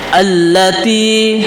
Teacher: ada dua lam alif lam dan lam maka untuk mempermudah kita maka lamnya dijadikan satu dan ditasdidkan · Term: Alif Lam Syamsiah, alif lam syamsiah